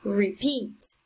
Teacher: so the strongest sound is on the second syllable